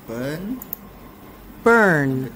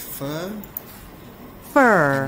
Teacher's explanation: the uh sound is a little bit dragged